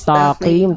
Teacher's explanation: Mustaqim, yang mustaqim, taqim, ta tipis, qaf juga ketebalannya menipis ketika kasrah